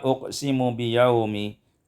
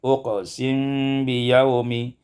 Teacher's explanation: iskanul mim ma'al ikhfa, disukunkan mim dengan ikhfa